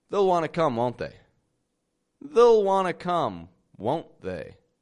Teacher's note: But I'm dropping that EY from the word they. I'm saying they'll.